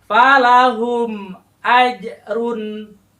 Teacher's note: Ini harus dibaca dengan dengan jelas sejelas-jelasnya tanpa dengung tanpa Hai sum ataupun tanpa yang suara-suara yang lain pokoknya jelas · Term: izhar syafawi